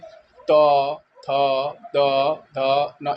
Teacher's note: दंत व्यंजन आपके जो हमारे दांत के सहारे बोले जाते हैं